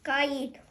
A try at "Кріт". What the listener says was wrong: тільки не Каїт к К один звук